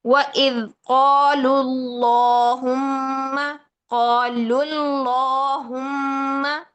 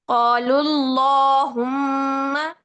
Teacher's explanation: جب اس میں جلالہ سے پہلے زبر یا پیش آ جائے تو اس میں جلالہ کو موٹا پڑھیں گے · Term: لام کی تفخیم